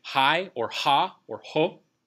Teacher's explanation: it will take on the structure of the vowel sound that comes after it